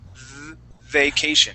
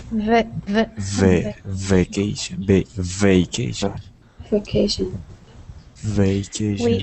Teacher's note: Um, so siphon, uh, remember when we say uh, vacation to pronounce the V, we put our teeth on top of our bottom lip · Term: V sound